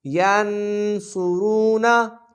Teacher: صاد حرف مستعلیہ میں سے ہے، موٹا پڑھیں گے، را موٹا پڑھا جائے گا، را پر پیش ہے، واو ساکن سے پہلے پیش ہے، واو مدہ کا قاعدہ، 2 سیکنڈ کھینچ کے پڑھیں گے۔